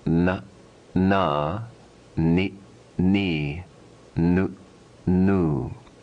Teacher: the nasal quality vibrating through the nasal passages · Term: nasal sound